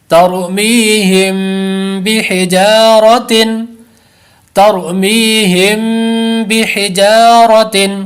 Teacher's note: را ساکن سے پہلے زبر ہے اس لیے را کو پر کریں گے، می پہ یا مدہ ہے اور اخفاء شفوی کا غنہ بھی کریں گے. بحجا پر الف مدہ ہے، لمبا کریں گے.